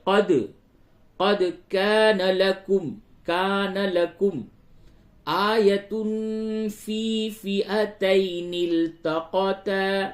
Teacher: قد بڑی قاف اور دال میں قلقلہ کیجئے